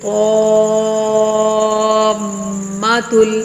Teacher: میم مشدد کا یہ قاعدہ ہے کہ جب اس کے اوپر تشدید آ جائے تو یہاں پر غنہ کرتے ہیں 1 الف کے برابر رک کر